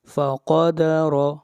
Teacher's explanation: لام کو کھینچ کر پڑھیں گے ایک الف کے برابر، فقدر، قاف حروف استعلا میں سے ہے، قاف کو موٹا پڑھا جائے گا